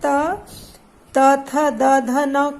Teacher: तो जीभ है ना वो दांतों का सहारा लेती है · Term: दंत व्यंजन